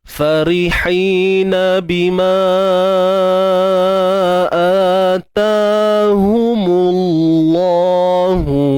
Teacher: Kalimah Allah ni kita kena baca dengan taghliz, tebal. Sebab apa? Sebab kalimah Allah sebelumnya terdapat baris hadapan.